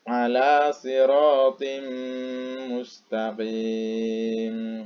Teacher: Kemudian contoh yang pakai dengung, yang berguna nomor 2 tadi itu adalah ala siratim mustaqim. Jadi tanwinnya dimasukkan ke mim dan berdengung.